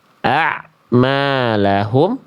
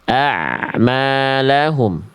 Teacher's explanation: Jadi bunyi ain dengan huruf berikutnya tidak ada jeda hening dulu. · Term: tawasud